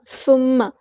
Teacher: ثم میم پہ غنہ زمانی ہو رہا ہے تو الف کے برابر رکیں گے